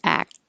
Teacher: now the K is on one side, act, and then the T will connect to the vowel